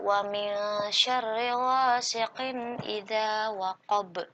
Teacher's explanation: Nah, ghasiqin idza di sini ada tanwin bertemu dengan huruf alif disebut dengan izhar. Harus jelas cara baca tanwinnya · nun sukun bertemu dengan huruf sya. Nah, di sini disebut dengan ikhfa, harus disamakan atau didengungkan dan nun sukunnya berubah menjadi eng